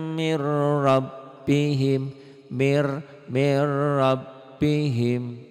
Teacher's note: Berarti ini bunyi nun matinya masuk ke ro.